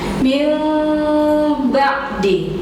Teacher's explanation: bibirnya rapat tidak sempurna, ditahan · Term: iqlab